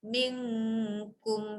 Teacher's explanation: Nun dengan kaf, situ dengung, mula dengung, lepas tu jelas.